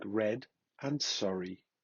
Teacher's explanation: Formed when the tongue approaches the back of the alveolar ridge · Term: Postalveolar